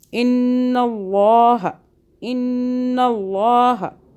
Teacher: آگے نون پہ یہ نون مشدد ہے، غنہ کریں گے